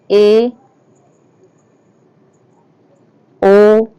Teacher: अर्ध संवृद्ध में जिन स्वरों के उच्चारण में मुख द्वार आधा बंद रहता है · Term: अर्ध संवृत